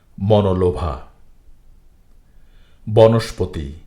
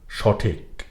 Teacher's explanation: এই শব্দগুলোর প্রতিটি শব্দের শুরুর অটি ও বা ওকারের মত উচ্চারিত হয়েছে